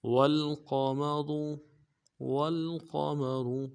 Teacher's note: شمس، شمس، الشمس والقمر، والقمر، واو کو لام کے ساتھ ملانا ہے، قاف کو موٹا ادا کریں گے، میم کو نرم سے ادا کریں گے، اور را کو موٹا ادا کریں گے